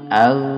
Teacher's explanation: ini bukan kol-kolah tidak boleh dipantulkan أغ. Nah, itu yang salah dipantulkan itu salah karena di sini bukan huruf qalqalah.